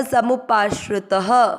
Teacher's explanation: समुपाश्रय और त में अमिक्स करना समुपाश्रितः, त में अ की मात्रा है इसलिए विसर्ग को यहाँ पर ह पड़ा है